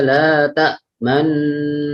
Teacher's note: Ishmam yaitu artinya bibir bercucu di tengah-tengah dengung sebagai isyarat bunyi dhamma